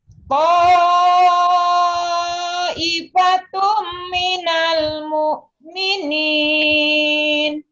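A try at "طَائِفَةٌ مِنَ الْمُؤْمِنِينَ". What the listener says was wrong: Tapi jangan kepanjangan Mbak wajibnya. 5 ketukan aja. Ta'ifatum. Jangan kepanjangan.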